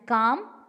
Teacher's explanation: the back of the tongue is raised towards the soft palate. Back of the tongue is raised towards the soft palate. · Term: back vowels